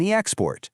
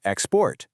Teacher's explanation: For these two syllable words, when it's a noun, you stress the first syllable. When it's a verb, you stress the second. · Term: noun/verb stress shift